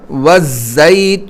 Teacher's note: اور زا جو ہے نا، زا یہ دانت ملا کر نکالنا ہوتا ہے، اور اس میں جو ہے وہ سختی ہوتی ہے